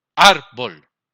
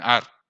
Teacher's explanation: ¿Dónde estamos haciendo la mayor fuerza? En ar. Entonces, la sílaba tónica es ar.